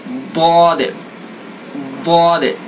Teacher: जबान की करवट लगानी है, सिर्फ किनारा नहीं लगाना, नोक नहीं लगाना, सिर्फ करवट लगानी है ऊपर की दाढ़ों पर